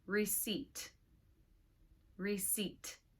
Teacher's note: Now you see the letter P, but it is silent. Do not say P. There's no P sound. Simply receipt.